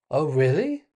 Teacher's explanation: We could say it with a surprised intonation. Oh, really? And that goes up.